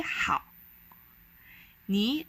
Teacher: second tone so it slightly goes up how is the hard third tone where you gotta press your